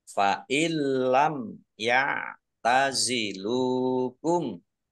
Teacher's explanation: masuk ke huruf lam tetapi tidak mendengung, ditandai lamnya ada tasdidnya. Fa illam ya tazilukum. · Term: idgham bila gunnah